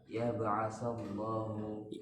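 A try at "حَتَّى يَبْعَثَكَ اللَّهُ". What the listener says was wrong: Ada kanya kan? Hatta ya ba'asakallahu.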